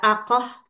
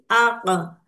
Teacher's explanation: Jadi tidak ada hembusan ketika kita mengucapkan ee huruf qof. Tidak aqoh tapi aq.